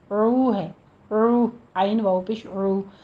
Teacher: دونوں ہونٹوں کو گول کرتے ہوئے واو مدہ ادا کرنی ہے، عین کو وسط حلق سے ادا کرنا ہے، اس کو او نہیں کہنا، عو ہے، عو، عین واو پیش عو۔